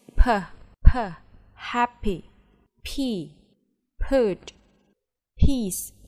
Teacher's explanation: when you produce per so your lower lips and upper lips they touch each other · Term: labial